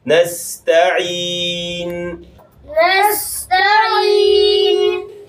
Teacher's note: آخر میں نون آئے گا، اس وقت ہلکی سی آواز جو ہے ناک میں جائے گی